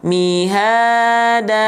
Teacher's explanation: boleh dia lempeng-lempeng aja, tapi kadarnya tetap 1 kali ayun 2 harokat